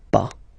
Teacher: Okay, we write it PAS, okay, but as usual, final S is not pronounced, so it's pas